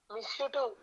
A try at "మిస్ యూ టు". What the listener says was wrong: నువ్వు ఎట్టకారంగా చెప్పకు, నేను ఒక ఫీల్తో చెప్తే నువ్వు అదే ఫీల్తో చెప్పాలి.